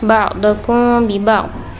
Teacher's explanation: ikhfa syafawi, sebab mim mati bertemu huruf ba. Penyebutannya tidak terlalu mingkem, tidak tertutup rapat